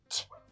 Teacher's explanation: it's a quick sound and you can't hold it out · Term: CH sound